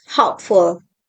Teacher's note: For example, hope becomes hopeful, and the stress stays on hope. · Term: stress preserving suffixes, stress-preserving suffix